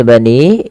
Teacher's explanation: pada lafal bani ini panjangkan suara ni-nya sepanjang 4 atau 5 harakat